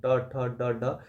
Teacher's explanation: ट वर्ग होता है ट ठ ड ड य मुर्धन्य से बोले जाते हैं